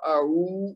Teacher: عین کے بعد چونکہ واو مدہ ہے تو اعو, اس کو 2 حرکت دینا ہے